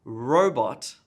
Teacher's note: the emphasis on the first syllable in robot